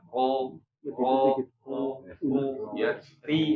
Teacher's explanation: Karakter kasroh itu tipis, jadi dia harus diturunkan rahang kita, rahang ya, rahang bawahnya diturunkan, ri, jadi harus dibuat benar-benar tipis ya, ri ya, huruf ro. Kalau fathah atau dhamma dibuat lebih tebal, ro ya, ri. Nah itu beda.